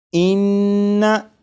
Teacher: इस नून मुशद्दद को जब पढ़ेंगे तो ज़बान तालू से लगी होगी। आप गौर करिएगा कि नून मुशद्दद की अदायगी के वक्त ज़बान तालू से लगेगी, इस बात पर गौर करिएगा।